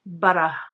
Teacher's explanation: some tap their tongue lightly on the inside top of their mouths, the gum ridge